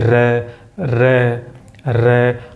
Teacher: कांपना, रे बोल के देखिए, रे, हमारी जीभ इस तरह कांपती हुई नजर आएगी, बार बार हिलती हुई नजर आती है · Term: लुंठित वर्ण